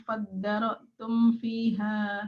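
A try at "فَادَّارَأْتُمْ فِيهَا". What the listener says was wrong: Faddara, dipanjangin Bu, faddaratum fiha.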